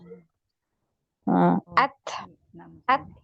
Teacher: Punggung ujung lidah nempel di pangkal dua gigi seri atas.